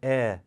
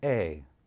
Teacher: her vowel has raised one final time from air to a